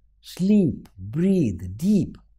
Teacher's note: Sleep, breathe, deep, all are stressed, and E, the long vowel, is repeated. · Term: assonance